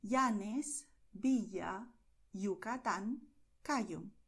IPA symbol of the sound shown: i